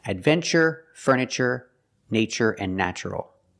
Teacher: there's no stress after the T, so we pronounce it ch